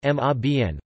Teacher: with stress on the second syllable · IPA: [ʔʊmˈʃʀaɪ̯bən]